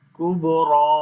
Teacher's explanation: با کے اوپر قلقلہ کریں گے جو کمزور قلقلہ ہوگا، را کو موٹا پڑھیں گے اور لمبا بھی کریں گے